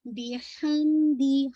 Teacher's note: मीम पे आपका नाक़िस गुन्ना